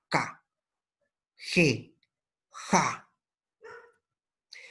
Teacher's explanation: La lengua debe colocarse sobre el velo del paladar. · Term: velar